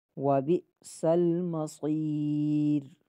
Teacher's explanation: عذاب جہنم وبئس المصیر، وبئس المصیر، واو میں ہونٹ گول ہوں گے، بِ میں جھٹکا دیں گے، سین سیٹی والا حرف ہے، اس میں سیٹی باریک کریں گے۔ وبئس المصیر، اور صاد بھی سیٹی والے حروف میں سے، لیکن صاد کی سیٹی موٹی ہوگی، را باریک ہوگا یہاں پہ۔